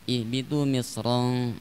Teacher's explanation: jelas di situ dibaca tebal roknya karena dalam keadaan fathah